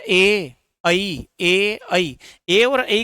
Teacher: ए और ऐ के उच्चारण में भी हमारे ओष्ठ गोल नहीं होते हैं। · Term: अ वृत्ताकार स्वर